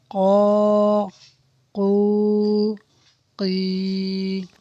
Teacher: قاف زبان کی جڑ اور تالو کے نرم حصے سے ادا ہوتا ہے